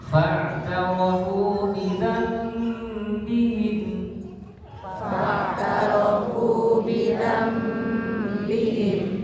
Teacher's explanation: Jadi gunanya dialihkan juga sebagian dari perut, sebagian dari hidung. Beda sama izhar, kalau izhar gunanya 100% di hidung. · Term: mimnya samar